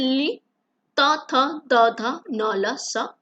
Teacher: दंतों से ली त थ द ध न ल स का उच्चारण हो जाता है